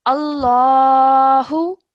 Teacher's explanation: you said this lam as a thick lam because the word Allah comes and the letter before has a fatha. So, Allahu, like that, which you did really, really well.